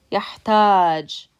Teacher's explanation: And when you pronounce this, يحتاج, the second syllable has stress because you're pronouncing it longer than you are the first syllable